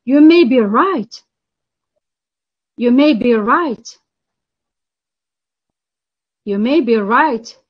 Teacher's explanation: the pitch falls then rises this pattern shows limited agreement response with reservation uncertainty or doubt